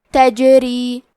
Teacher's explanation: حرف را کے نیچے زیر ہے، یہاں را کا حکم ہے ترقیق، تو ہمیں حرف را کو پتلی آواز میں پڑھنا ہے